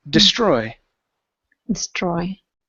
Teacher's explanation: On this word, the stress is on the end of the word.